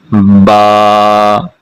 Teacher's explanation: با منہ کے ہونٹوں کے خشک حصے سے اس کی ادائیگی ہوگی